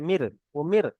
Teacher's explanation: র সাকিনের পূর্বে যদি জের আসে তাহলে র সাকিনটাকে বারিক করে পড়তে হবে